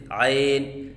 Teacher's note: عین کے درمیان یا کو مجہول پڑھنا، جیسے عین، یہ غلط ہے